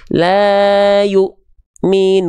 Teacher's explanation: huruf-huruf yang bertemu dengan hamzah, apalagi dia ketika sukun, maka dia akan terhenti bacaannya, terhentak. Kalau ain dia ada ngalir sedikit suaranya. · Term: hamzah sukun